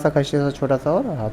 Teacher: बड़ा स छोटा सा और ह को ऊष्म व्यंजन कहा जाता है